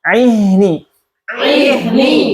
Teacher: Baik, pakai ha ya. Ha di pangkal tenggorokan.